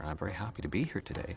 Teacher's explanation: a Canadian has a very gentle drifting up pattern